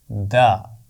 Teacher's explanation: زبان کی نوک اوپر والے دانتوں کے پیچھے لگا کر دال کی آواز ادا ہوتی ہے، دا۔ ان الفاظ میں دال اور تا کو تلاش کریں۔